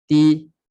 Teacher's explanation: Hujung lidah sentuh pada belakang pangkal gigi atas. Dekat kita punya akar gigi atas. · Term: makhraj ta